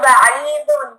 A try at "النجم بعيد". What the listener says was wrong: Try not to put the too much emphasis on the jim, okay?